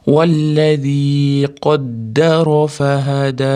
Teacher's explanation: Zda til bosamiz, ya'da cho'zamiz 1-2 deguncha. Qaddara ro'yni ham tafhimligini beramiz, yo'g'onroq aytamiz. Fahada oxirida dni cho'zib to'xtaymiz.